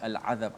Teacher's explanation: Ain dekat mana? Dekat halqum. Lam dekat hujung lidah. Maka jauh. Sebab itulah kita dibaca dengan izhar. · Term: lam qamariyah